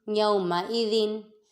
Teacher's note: یومئذن، یا پہ واولین، میم متحرک، حمزہ متحرک، ذال منون اور ذال میں سیٹی کی آواز ادا نہیں کریں گے